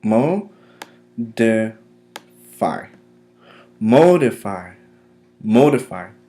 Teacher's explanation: the accent is placed mostly on the first syllable